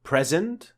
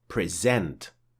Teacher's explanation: with present, the stress is on the first syllable of the word. But with present, the stress is on the second part of the word.